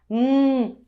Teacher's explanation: é uma consoante alveolar, formada pelo contato da ponta da língua com a raiz dos dentes incisivos superiores